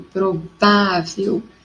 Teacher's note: eu tenho a minha sílaba tônica forte no vá, e como ela é terminada com L, ela recebe acento.